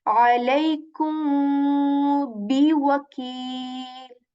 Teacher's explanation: Because otherwise you will not articulate this ba properly. So first you will have to hide the sound, then say the ba letter with joining your lips with strength